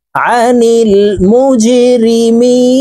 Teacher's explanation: ফি জান্নাতিন ইয়াতাসাআলুন আনিল মুজরিমিন। জিম কলকলার হরফ নিচের দিকে ধাবিত করে ধাক্কা দিয়ে উচ্চারণ করব। দেখুন জিমের নিচে ত্রিভুজ চিহ্ন নিচের দিকে ধাবিত করা দেওয়া আছে, তো আমরা নিচের দিকে ধাবিত করে এই জিম হরফকে ধাক্কা দিয়ে উচ্চারণ করব।